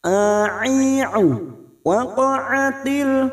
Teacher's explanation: huruf ain yang memiliki sifat tawasud dan jahar.